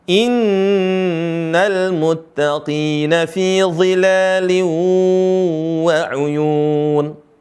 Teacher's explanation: Perhatikan huruf qaf dibaca tebal